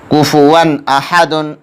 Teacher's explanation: کفوا احد، اس میں ایک قاعدہ اظہار ہو رہا ہے یا اظہار حلقی ہو رہا ہے کیونکہ تنوین کے بعد حروف اظہار میں سے حمزہ ہے، اس لیے تنوین کا اظہار ہوگا۔ اظہار میں تنوین کو ظاہر کر کے بلا غنہ کے جلد پڑھیں گے۔